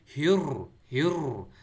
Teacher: را میں تھڑتھڑاہٹ کی آواز آنی چاہیے